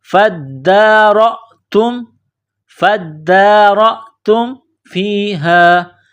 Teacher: فا کو دال کے ساتھ ملانا ہے، پلس کرنا ہے، دال میں سختی کرنی ہے، دال کے اوپر کڑا زبر ہے، ایک الف کی لمٹ میں کھینچنا ہے. را کے اوپر زبر، را کو موٹا کرنا ہے، را کو حمزہ کے ساتھ پلس کرنا ہے.